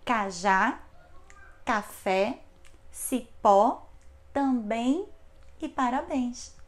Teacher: Outra regrinha é a regrinha exatamente das palavras oxítonas, que são aquelas cuja sílaba tônica está na última posição. Acentuam-se as oxítonas terminadas em a, e, o, em e ens.